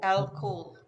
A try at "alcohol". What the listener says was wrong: Sí.